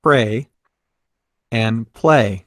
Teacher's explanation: may not sound similar but they have some things in common both of them are made with air passing through the mouth around the sides of the tongue like a liquid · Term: liquid consonants